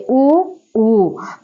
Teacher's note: రావడం జరిగింది తర్వాత విషయాన్ని గమనించినట్లయితే ఓస్యములు ఓస్యము అనగా పెదవి అని అర్థం పెదవి సహాయంతో పలకబడేటటువంటి అచ్చులు